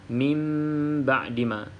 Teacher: kita tukarkan bunyi huruf nun kepada huruf mim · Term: iqlab